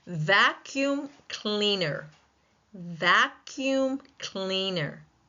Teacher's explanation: Vac in vacuum cleaner takes the primary stress as noted by that little line at the beginning.